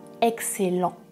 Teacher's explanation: ici je prononce -ent parce que ce n'est pas un verbe c'est un adjectif